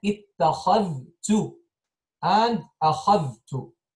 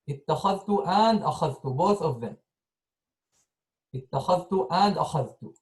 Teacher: He made إدغام for the ذال in the تاء. He merged the ذال into the تاء. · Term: idgham